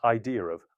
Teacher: an intrusive r may appear to link the vowels more naturally